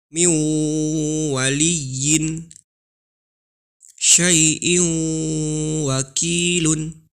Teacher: huruf nun sukun atau tanwin nya dimasukkan ke huruf wawu dan ditahan selama dua harokat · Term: Idgham Bighunnah